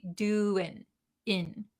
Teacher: doing that in has that kind of nasy sound in but when we're talking very quickly we skip the nasal sound